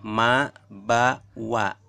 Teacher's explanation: Keluar di antara 2 bibir atas bawah